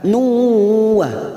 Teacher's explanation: Ada duma tanwin, duma tain yang bertemu waw, namanya bacaan idgham biguna. Kita tekan selama 3 harokat.